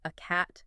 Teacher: The article a is almost always pronounced in its weak form, which is the schwa sound.